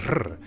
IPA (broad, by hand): r